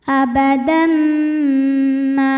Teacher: bunyi M dan tahan bunyi M-nya, dengungkan. Abadan ma. Ma, hukumnya mad thabi'i dzahiri, karena ada alif didahului baris fathah. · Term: idgham bighunnah